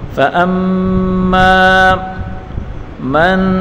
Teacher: میم مشدد گنہ کریں گے اور میم الف زبر ما الف مدہ ہے، اس کو ایک الف کی مقدار کھینچ کر پڑھیں گے۔